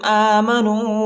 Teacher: حمزہ پر کڑا زبر آیا ہے، اس کو ایک الف کے مقدار تک کھینچیں گے اور نون و پیشنو الف نہیں پڑھا جاتا، الف کے اوپر حرکت نہیں ہے۔